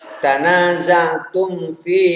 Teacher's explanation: Karena ada huruf mim sukun, mim mati bertemu dengan fa, maka mim m-nya itu harus jelas. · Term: idhar syafawi